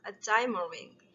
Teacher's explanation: the last d sounds in diamonds disappears